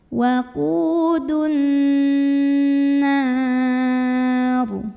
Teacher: Karena alif lam bertemu huruf syamsiyah yaitu nun. Maka alif lam ini tidak perlu dibaca ya, dari dal langsung masukkan ke nun. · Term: alif lam syamsiyah